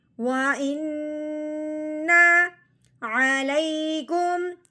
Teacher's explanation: واؤ کو ہونٹوں کی گلائی سے ادا کرنا ہے. ہم الف کے نیچے زیر آنے کی وجہ سے الف کو ہم نے حمزہ بنانا ہے.